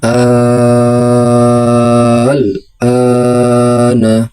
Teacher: Mad lazim mukhafaf kalimi adalah mad thobi'i yang bertemu dengan huruf berharakat sukun dalam satu kata dan dibaca panjang enam harakat